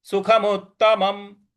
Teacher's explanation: सुखम के बाद जो आधा त है उस पर हमको हल्का सा बल लगाना है सुखम उत्तमम इसके बाद देखिए मुत्तमम में दो बार म लिखा हुआ है।